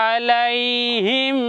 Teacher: মিমে জজমের পরে মিম আছে এখনো গুণ হবে